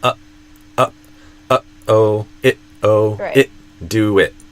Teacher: But, a lot of people think that I'm deleting it because it's it's again like this different type of a T sound that most people aren't expecting where instead of stopping the sound with my tongue the main way I'm stopping the sound is kind of like in my throat. My vocal cords or vocal folds suddenly stopping like in the middle of the word uh-oh at the end of that first syllable uh uh uh-oh it oh it do it.